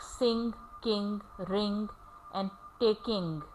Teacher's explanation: It does not have g sound after ing, because g is never pronounced after ing in the final position.